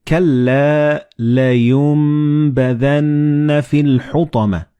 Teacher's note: the noon and ba, when they follow one another in the same word, you don't pronounce noon or ba, but you pronounce meme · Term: assimilated together